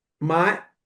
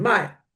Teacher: my with a third tone means to buy and my with the falling tone means to sell